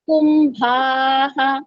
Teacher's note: విదతే కకు భస్చ భ మహాప్రాణము ష కు చకారము ఉంది కకుబస్చ కుంభాః బ మహాప్రాణము దీర్ఘము అండ్ విసర్గ ఉంది